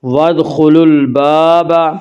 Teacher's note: وادخلوا الباب، الباب الف مدہ، الف ہمیشہ مدہ ہوتا ہے، الف سے پہلے ہمیشہ زبر ہوتا ہے، الف مدہ کو ایک الف کے برابر کھینچ کر پڑھیں گے